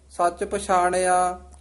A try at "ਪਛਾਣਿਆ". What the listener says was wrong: ਆ ਤੇ ਨਹੀਂ ਬਿੰਦੀ ਲਾਉਣੀ, ਪਛਾਣਿਆ ਜਾਣਿਆ ਇਸ ਤਰ੍ਹਾਂ ਉਚਾਰਨ ਕਰਨਾ।